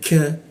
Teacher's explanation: di siku tenggorokan lidahnya kita turunkan sehingga ka itu ada hembusan udaranya